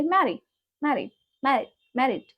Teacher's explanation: D is there, but it's very soft.